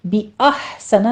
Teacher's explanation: बिअहसना में हा पर हमस होगा, इसको साकिन करना है वस्ते हालत में ले जाके